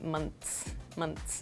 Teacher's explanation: teeth and we make like a quick s sound months months so the th sound almost disappears · So regarding your second question about the S sound, in a word like months, your tongue touches the back of your teeth and we make like a quick S sound